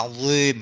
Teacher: Jadi dia barisnya bawah tapi di mulut kita tetap dia agak monyong dia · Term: huruf dzal